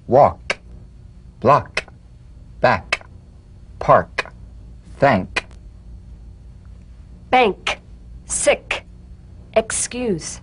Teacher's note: in the the soft unvoiced click of the K drum beat feel a crisp tap and a pulsation in the back of the tongue tap the K drum beat in these words walk block back · Cognate, g, the unvoiced tongue back plosive consonant. With the tongue in the G position, let the tongue spring away in the soft, unvoiced click of the K drum beat. Feel a crisp tap and a pulsation in the back of the tongue.